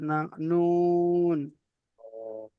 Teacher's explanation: 9 নম্বরে কি রয়েছে, জিভের আগা এবং তার বরাবর উপরের তালুর সাথে লাগিয়ে উচ্চারিত হয়